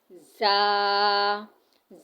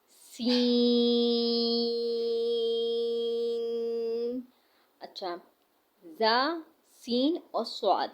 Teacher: زا کو ہم نے اس طرح سے پڑھنا ہے کہ اس میں سیٹی کی آواز واضح ہو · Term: سیٹی والے حرف